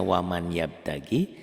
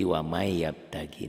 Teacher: karena nun mati ketemu ya, maka n-nya melebur berubah jadi y gitu loh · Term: idgham bi gunnah